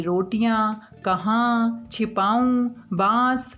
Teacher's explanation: इन शब्दों का उच्चारण नाक व मुंह दोनों से किया जाता है